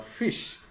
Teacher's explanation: the usual pronunciation of the word fish begins and ends with the voiceless fricatives